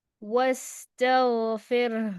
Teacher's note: یہاں وستغفر، سین پر رخاوا، غین پر رخاوا، اور را پر توسط